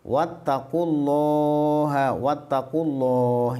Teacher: ini lafal Allah dibaca tafkhim tebal